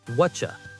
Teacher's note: I just say, "What you want?" It's almost like the T in what and the Y in you had a baby, and that baby is a ch sound